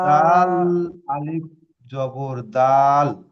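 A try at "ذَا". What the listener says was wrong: এটা দাল নয়, এটা দাল নয়, এটা হলো জাল। জাল, আলিফ জাবার জা।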